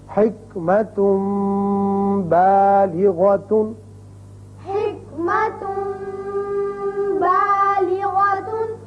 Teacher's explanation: دو حرکات کے برابر اقلاب ہو